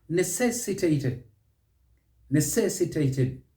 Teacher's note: Stress is on the second syllable, and then you'll get it right.